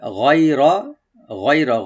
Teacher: গাইনটাকে আমরা ডিপ করবো, আর ইয়া হরফে লিন, গয় একটা সফট করে পড়বো , হয় র, রটাকে ডিপ করে পড়বো, গয়র, এখানে কোনো টান